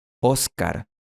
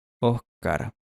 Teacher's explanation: Cuando el sonido [s] se reemplaza con un sonido de [h] esto se llama aspiración o debucalización.